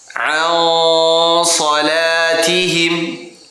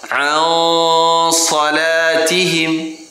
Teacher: Jadi ikhfanya tersebut hampir kepada huruf sad.